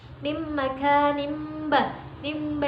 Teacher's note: Huruf iklab itu ada 1, yaitu ba. Cara membacanya mengubah suara nun sukun atau tanwin menjadi suara mim sukun atau mim mati.